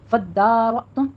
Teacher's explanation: فدارتم، فدا سختی کیجیے، یہاں پہ تشدید ہے، الف مدہ بھی ادا کرنا ہے، فتحہ قائمہ ہے. فدارتم، را میں را مفخم ہے، پر ہو جائے گی اور حمزہ پہ تھوڑا سا جھٹکا دینا ہے